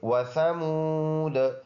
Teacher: واو ہونٹوں کے گول ہونے سے اور سا نرم